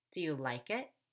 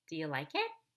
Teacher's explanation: yes/no question you'll have the opposite intonation of a wh question you're going to rise at the end of the question but before you can rise you have to fall · Like is the most important word, and I actually fall on like so that I can go up on it. The reason I do that is so I don't end up sounding like Mickey Mouse.